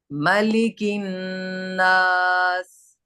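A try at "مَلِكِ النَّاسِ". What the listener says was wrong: ये मालिकिन क्यों पढ़ रहे हो? जबर जेर पेश को जल्दी पढ़ें। मलिकिन नास।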